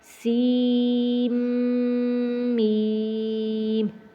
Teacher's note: سین پڑھ کر آگے میم کی آواز میں ہونٹ کو بند کر دینا ہے، پھر غنہ کر کے پھر ہم نے میم پڑھنا ہے